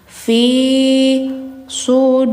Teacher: fi harus dipanjangkan karena setelahnya ada ya mati ya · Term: huruf mad